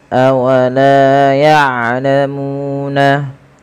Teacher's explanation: Panjangkan huruf lam sepanjang dua harakat dan huruf mu sepanjang dua harakat. Karena kedua bacaan ini adalah mad thobi'i.